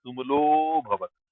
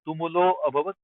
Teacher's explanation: And tumulo abhavat, when you extend it, you kind of hide akara. You don't make the akara pronounced. So tumulo bhavat. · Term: akara goes hiding inside